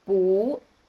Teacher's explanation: But when 不 is followed by another fourth tone, like 谢, the tone changes to the second tone, 不. Alright, 不谢 instead of 不谢.